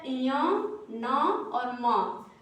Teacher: इसका जब हम उच्चारण करते हैं तो इसका जो है नाक के द्वारा ध्वनि निकलता है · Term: अनुनासिक